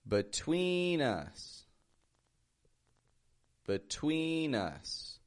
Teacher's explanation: notice how we stretch that twe · notice how the be in the beginning just gets a b kind of sound it's not a between but